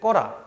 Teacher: 이 으라는 친구가 음성이기 때문에 어라를 선택해서 끄어란데 이때 으가 탈락하기 때문에 꺼라 이렇게 되고요